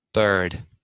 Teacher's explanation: Maybe when I pronounce when I produce the R sound, I'm actually raising the back of the tongue a little too much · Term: bunching